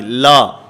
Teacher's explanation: اس میں امالہ کی طرف نہیں جانا، جھکاؤ نہیں آنا چاہیے